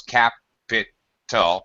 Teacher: the first syllable is stressed, so you have 3 syllables